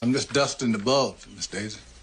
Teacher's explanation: they're going to drop the g at the end of ing words like those words in the continuous tense